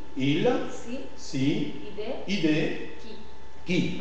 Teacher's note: c'est une voyelle orale, palatale, fermée, non arrondie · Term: La voyelle I